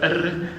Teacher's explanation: The R is a trilled tip of the tongue R.